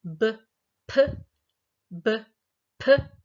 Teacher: The place of articulation, if I use the examples of b, p, b, p, so b is bilabial, and p, they are bilabial. I'm putting my two lips bilabial, two lips together to create that sound.